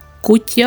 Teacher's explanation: а отже наголос падає на А